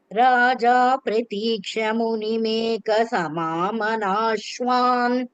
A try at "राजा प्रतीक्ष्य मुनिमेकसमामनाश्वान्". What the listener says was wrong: That pratikshya, ya should be heard very clearly. First time only Pratiksha here.